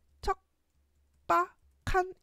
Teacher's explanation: 기억하고 비읍이 만났을 때 비읍이 쌍비업으로 변하는 된 소리 되기 된 소리 되기가 먼저 일어나서 척박한 이렇게 바뀌어야 돼.